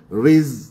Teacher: Riz adakan safir pada huruf zai mati, riz. Jangan jadi riz, qalqalah pula kan.